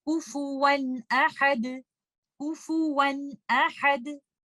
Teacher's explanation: तो इसमें आप देख सकते हैं तनवीन के बाद आने वाला लेटर हमजा एक थ्रोट लेटर है, तो यहाँ पर आप तनवीन में छुपे हुए नून साकिन को इजहार के साथ और क्लियरली पढ़ेंगे और आप इसकी अदायगी कुछ इस तरह से करेंगे कुफुवन अहद कुफुवन अहद। आप इस नून साकिना जो तनवीन के अंदर छुपा हुआ है उसके गुन्ना को बहुत ज्यादा लंबा नहीं करेंगे कुफुवन अहद, आप इस तरह से इसको नहीं पढ़ेंगे।